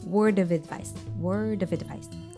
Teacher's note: This D sound from word links into off, and off is linked to the vowel sound advice.